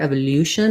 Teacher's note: i think british may say it more like evolu with a glide there